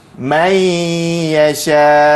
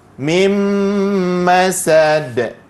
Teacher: Cara bacaannya adalah dibaca secara idgham beserta dengung. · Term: idgham ma'al ghunnah